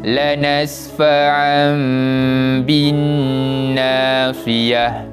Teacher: Kemudian memandangkan dia bertemu dengan huruf ba, maka telah ditukarkan tanwin 2 di atas itu kepada huruf mim kecil yang ekornya ke bawah. Sebab cara bacaan iqlab ini perlu digantikan bunyi bacaan tanwin kepada huruf mim dan dibaca dengan bacaan dengung